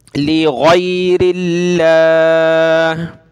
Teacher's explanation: لفظ اللہ سے پہلے را پہ زیر ہے تو کیا کریں گے، لفظ اللہ کو پتلا کر کے پڑھیں گے، لغیر اللہ.